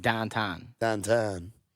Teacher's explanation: Pittsburgh, their accent is the OW sound that really is like distinct. So like if you're gonna say town, they say ton.